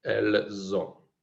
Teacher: ahí suena la S de elle, pero no suena como una S, sino que suena como una Z. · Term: liaison